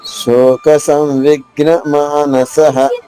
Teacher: సాధారణ విసర్గ ఉచ్చారణ హ హ్రస్వంగా